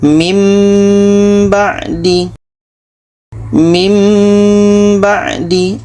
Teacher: Bunyi nun ini kita tukar kepada bunyi mim, dan di sini kita dengungkan. Kalau kita baca min ba'di, itu masih belum betul karena yang terdengar bunyi nun. Jadi kita baca mim ba'di. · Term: iklab